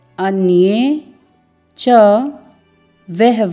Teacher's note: अन्ये य में एक ही मात्रा है। अन्ये च वह व के साथ विसर्ग है, ह की ध्वनि आएगी।